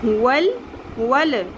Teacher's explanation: لام پر نہیں کرنا قلقلہ، لام کو مخرج سے نہیں لانا